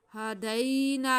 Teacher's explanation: उसके बाद हा पे हमारे पास दो ज़बर हैं यानी कि तनवीन है, उसके बाद हा हल्की है तो इस पे इजहार होगा, तनवीन को वाज़े करके पढ़ेंगे। आगे या साकिन से पहले ज़बर है या लीन है, इसको खींचेंगे नहीं, नरमी से पढ़ेंगे।